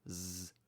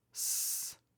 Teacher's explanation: The only difference between these two is that zed uses your vocal cords, but S doesn't. That's what makes Z a voiced consonant and S an unvoiced consonant.